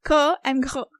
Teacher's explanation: you are using the upper part of your mouth to stop this air from coming out. And then they have described further that p, t, k are voiceless and b, d, g are voiced. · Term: velar